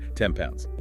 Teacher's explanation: So the N sound changes to an M sound, also made with the lips to make the transition smoother. N assimilates to the place of articulation of P.